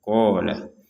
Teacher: huruf qof ini kita panjangkan dua harakat saja